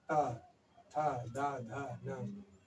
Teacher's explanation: दंत व्यंजन में दांत, जीभ जो है दांतों से स्पर्श होके आती है